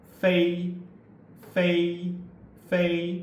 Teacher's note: So four, again, we group into a category, and because we're using the teeth touching the lower bottom lips